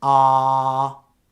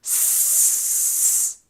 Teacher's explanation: You can feel voiced and unvoiced sounds if you touch your neck or put your fingers in your ears and say the vowel sound ah. It's voiced. Then say the consonant sound s, unvoiced.